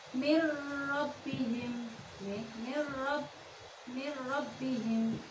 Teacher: Yang selanjutnya bacaan idgham bila gunnah, yaitu idgham memasukkan huruf yang pertama ke huruf yang kedua tanpa mendengung, tanpa merengeng